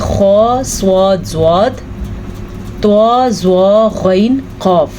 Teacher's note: یہ وہ 7 حروف ہیں جو ہمیشہ ہی موٹے پڑھے جاتے ہیں، تو ہم نے ان کو موٹا پڑھنا ہے اور قاف پہ قلقلہ بھی کرنا ہے۔ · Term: موٹے حروف